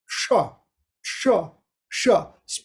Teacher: And the sha is coming from the middle, Murdanya, the middle here. The tongue is going back to the top of the mouth. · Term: Murdanyaha